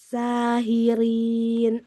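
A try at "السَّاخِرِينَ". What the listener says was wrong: kok sakhirin. Kok ya, jangan hi. Sakhirin.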